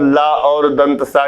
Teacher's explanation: अंतस्थ व्यंजन का जो ला होता है और ऊष्म व्यंजन का दंत सा, ये दोनों दंत से उच्चारित होते हैं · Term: दंत ध्वनि